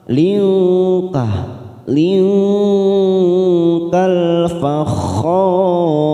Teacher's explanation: Khor mat arid disukun 4 harakat, kita panjangkan